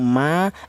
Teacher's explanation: untuk huruf mim dan huruf ba ini dihasilkan dari kedua bibir yang rapat, baik bibir atas atau bibir bawah itu nempel rapat dulu.